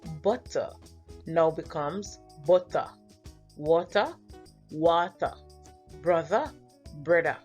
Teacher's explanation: the ER sound is replaced with a